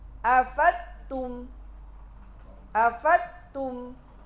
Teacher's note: memasukkan huruf dad kepada huruf setelahnya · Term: idghamuha Bima ba'daha